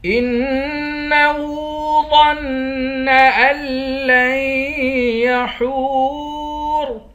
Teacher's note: ان لن یحور، ہا کو واو کے ساتھ ملا کر واو کو ایک الف کی مقدار کھینچیں گے، آخر میں را ہے، را کو موٹا پڑھیں گے